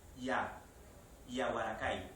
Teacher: la aproximante palatal Exactamente igual que en el inglés